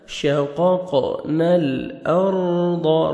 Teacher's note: را ساکن سے پہلے زبر ہے، را کو آپ نے پر کرنا ہے · قاف کو موٹا کر کے پڑھیں گے اور آگے قاف حروف قلقلہ میں سے ڈبل ساؤنڈ آئے گا